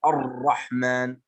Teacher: إذا كانت الراء مشددة وأتت هذه الراء مشددة فلا بد أن نخفي التكرير، لا بد أن نخفي تكرير الراء ولا نظهره، لأننا متى أظهرنا الراء المشددة فهنا عبارة عن الحرفين، يعني الراء المشددة عبارة عن حرفين.